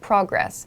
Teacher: The emphasis is on the first syllable, so progress. Here, however, it's used as a verb.